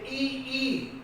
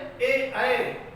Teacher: जब उसका कोई ऐसा स्वर जिसका उच्चारण करते समय हमारी जीभ का अगला भाग ऊपर उठता है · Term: अग्र स्वर